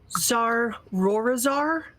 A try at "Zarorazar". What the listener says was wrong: Rorazar. Rorazar. Ro. You got to roll the R's. Zarrorazar.